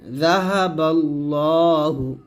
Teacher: এখানে লা বলবেন না ল মোটা করে বলবেন